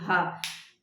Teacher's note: काकल्य ह होता है काकल्य क्योंकि यहां से काकल्य से आवाज आ रही है